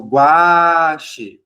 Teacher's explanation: Começa com a vogal mais fraca, termina com a mais forte, tá?